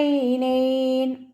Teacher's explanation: ഐന് തൊണ്ടയുടെ മധ്യഭാഗത്തു നിന്നാണ് വരുന്നത്, വസത്തുൽ ഹൽക്കിൽ നിന്ന്. അതിൻ്റെ സൗണ്ടിനെ ഹംസയായി പോവാതെ ശ്രദ്ധിക്കുക.